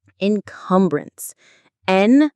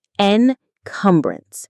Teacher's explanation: Encumbrance. The stress is on the second syllable, cum.